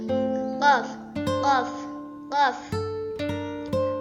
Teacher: memiliki sifat jahar, syiddah, dan qalqalah. Jadi nafasnya tidak keluar, suara tertahan dan mantul.